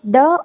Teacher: तो मूर्धन्य भी है। ड अल्पप्राण भी है और घोष वर्ण भी है।